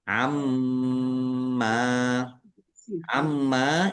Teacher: Mim ditandai mimnya ada tasdidnya. Mim tasdid dibaca mendengung ditahan dua harakat. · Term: idgham bighunah